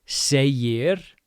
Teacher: Segir, we have the G right in the middle of two vowels. Second vowel is an I, so G is going to sound like a Y.